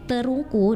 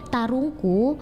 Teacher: pengubahan fonom E menjadi a kalau dalam bahasa Bugis